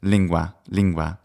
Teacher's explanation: once we get to that n we round the lips